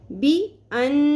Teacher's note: ہے، نون کے اوپر یہ ڈبلیو کی سائن والی تشدید ہے، یہاں پہ نون کی آواز کو ناک میں ٹھہرانا ہے، اس کو غنہ کرنا کہتے ہیں